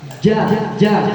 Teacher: ketika kita mau mengucapkan huruf ja maka menyentuh langit-langit Tengah nah lidah yang tengah menyentuh langit-langit bagian tengah